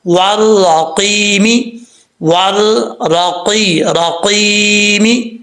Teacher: یا مدہ ہے، ایک الف کی مقدار لمبا کریں گے · یہاں پر واؤ کو جب را سے ملائیں گے بیچ میں الف اور لام جو ہے اسکپ ہو جائے گا، چھوڑ دیں گے. آگے قاف حروف مستعلیہ میں سے پر پڑھا جائے گا. را کے اوپر زبر ہے، را پر پڑھا جائے گا.